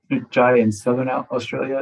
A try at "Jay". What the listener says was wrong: And it can be pronounced Jai, but I prefer Jay, just letting you know.